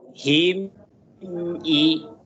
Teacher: ketika mim mati ketemu dengan a, jangan diputuskan suaranya, mengalir.